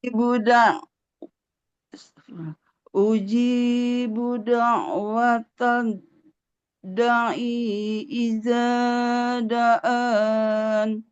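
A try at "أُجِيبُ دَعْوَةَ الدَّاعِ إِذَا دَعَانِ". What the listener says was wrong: nah, ainnya dia kalau harokat kasroh di depannya nggak ada ya, maka nggak boleh panjang ya. Uji buda'watad da'i iza da'an. Iza, zalnya dua harokat. Iza da'an.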